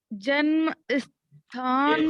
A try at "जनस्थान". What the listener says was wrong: जन्म कह रही है, जनस्थान।